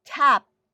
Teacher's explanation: this feature of aspiration like a burst of air accompanying the sound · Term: aspirated